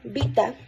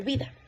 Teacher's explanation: la t se convierte en D